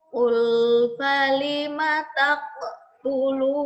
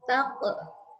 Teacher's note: Oke, selanjutnya ada qaf tanwin. Ini huruf qalqalah, maka perlu dipantulkan.